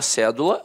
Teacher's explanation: a palavra cédula, notoriamente, é uma proparoxítona. A sílaba tônica está na antepenúltima sílaba.